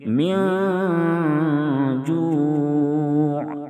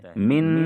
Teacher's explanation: نون کی آواز کو ناک میں چھپا کر غنہ اور اخفا کے ساتھ پڑھیں گے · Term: اخفاء حقیقی